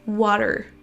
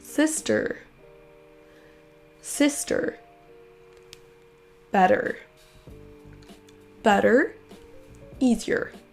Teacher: Si vous préférez l'accent US, là vous allez entendre une sorte de R roulé à la fin. Écoutez la différence.